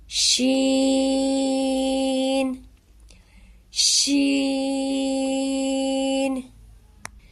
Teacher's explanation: شین کو پڑھتے وقت آپ کی آواز پھیلنی چاہیے۔ شین شین۔ شین چونکہ 3 حرف ملا کر بنتا ہے، شین یا نون، اس کو ہم 5 الف جتنا لمبا کر کے پڑھیں گے۔ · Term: پھیلتی ہوئی آواز